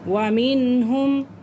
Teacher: نون ساکن کے بعد ہا آ رہا ہے، تو اس لیے ہم اس کو کیا کریں گے؟ ظاہر کر کے پڑھیں گے